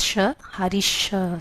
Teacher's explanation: So the sakara is um becoming shakara.